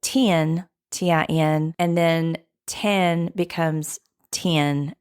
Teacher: The front lax merger happens when vowels like those in PIT and PET sound the same